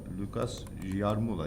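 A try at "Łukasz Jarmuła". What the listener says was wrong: Yeah, but this This L in Polish It's L with a cross in the middle, so it's not pronounced as L, but it's more like V, or kind of that sound. more pronounced as like Vukash. Vukash Yarmula.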